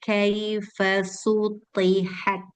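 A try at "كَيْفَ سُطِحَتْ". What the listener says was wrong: Suti ada jeda. Kaifa suti. Jangan kaifa sutihat. Ini jeda.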